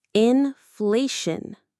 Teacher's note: There's our shun ending again. The stress falls on the middle part.